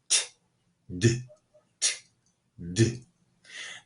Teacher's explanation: For both of these sounds, the tip of your tongue touches the ridge behind your upper teeth. It doesn't touch your teeth. It touches behind your teeth.